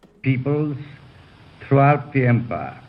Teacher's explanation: He does not have the rolled R's, so those are already gone